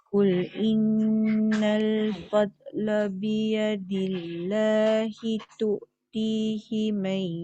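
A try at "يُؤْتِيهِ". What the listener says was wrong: Tak betul. Bukan tu'ti. Yu'ti. Yu'ti.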